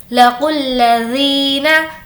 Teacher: लाम पर तजदीद है और तजदीद वाले हर्फ को पहले वाले हर्फ से मिलाया जाता है